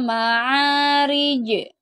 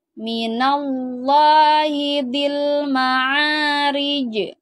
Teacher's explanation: huruf Ja harus mantul ya karena ini merupakan huruf Qalqalah